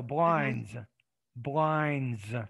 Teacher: blinds there's not really a d in there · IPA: [blaynz]